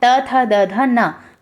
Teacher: फिर आपका आता है त वर्ग, इसे आप दंतव्य व्यंजन के अंतर्गत रखते हैं।